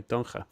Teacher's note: Yeah, you don't say the DH. It's a little bit more guttural for me because I can't help but give it the Dutch G. CH, the G sound for the ch.